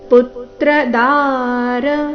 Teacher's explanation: ದಾರ ದ ದೀರ್ಘ ರ ರಸ್ವ